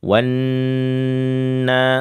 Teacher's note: Ya, digunnahkan sepanjang 2 sampai dengan 3 harokat. Ini gunnah sempurna ya, dan hanya mengeluarkan dari sisi hidung saja.